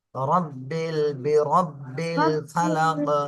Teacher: র এর উপরে জবর র মোটা করে বলতে হবে